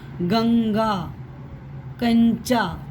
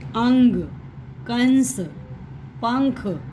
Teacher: नाक हमारी थोड़ी सी ऐसे फूलती पचकती है, जिससे हमें ये पता लगता है कि नाक से ध्वनि निकल रही है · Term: अनुस्वार